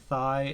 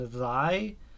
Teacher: some people differentiate thigh and thy by voicingness